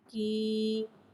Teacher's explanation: یا ساکن سے پہلے زیر آ رہا ہے، یا مدہ ہو رہا ہے، یا مدہ کو ایک الف یعنی 2 حرکات کے برابر کھینچ کے پڑھیں گے اور زیر کو نیچے گراتے ہوئے ادا کریں گے. کا یا زیر کی.